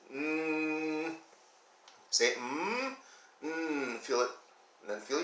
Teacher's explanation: those sounds come through your nose they're what we call nasal through your nose that is why if you get a cold